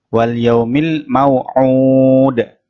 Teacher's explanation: Ainnya dibaca panjang 2 ayunan